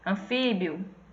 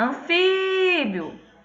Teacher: Se a gente for chamar anfíbio, o fi é que vai se prolongar. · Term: sílaba tônica